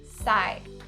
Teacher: So skip the P and just say psy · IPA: /saɪ/